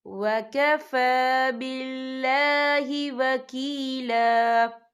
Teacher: وَكَفَى فا کے پر کھڑی حرکات ہے تو ہم یہاں 2 یا 3 حرکت کے برابر کھینچیں گے